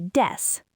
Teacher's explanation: S and the K are too hard to say together, so they just drop the K.